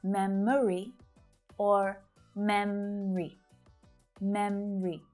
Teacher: Memory, with that little extra schwa syllable in the middle